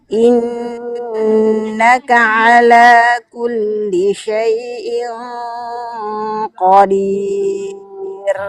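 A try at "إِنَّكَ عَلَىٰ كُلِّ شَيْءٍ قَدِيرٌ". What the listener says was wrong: Sama nih, ragu-ragu. Langsung naikkan pangkal lidahnya yang kencang. Innaka ala kulli syai'in qadir.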